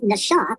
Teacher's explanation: It's a SH sound, it's not an S sound